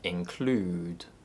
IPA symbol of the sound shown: u: